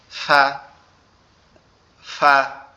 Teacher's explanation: উপরের দুইটা দাঁত ঠোঁটের পেটের উপরে সামান্য করে লাগবে, লেগে উচ্চারিত হবে ফা।